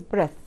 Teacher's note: نطقها like التي اتش العادية اللي هي الث وطبعا بتكون short vowel. الفاول نفسه ايه قصير في النطق.